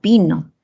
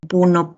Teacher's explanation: por el deslizamiento horizontal de la lengua, uno es anterior y el otro es posterior